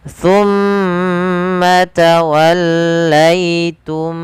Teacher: masukkan mim yang pertama kepada mim yang kedua dan ditahan suara mimnya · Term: idgham mimi